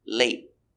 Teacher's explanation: T at the end after a vowel. So it is a stop T. We stop the air. We put our tongue up and stop the air.